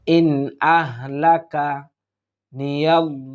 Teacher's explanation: দেখুন এখানে আমরা দ্রুত উচ্চারণ করার চেষ্টা করব ইন এখানে আমরা ইজহার অর্থাৎ স্পষ্টভাবে পড়ার চেষ্টা করব কোন গুন্না আমরা করবো না